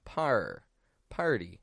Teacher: we give it a flap T sound with an R before it